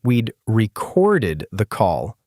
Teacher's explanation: I meant to say we'd recorded the call, stress on the second syllable, and it came out stressed on the first.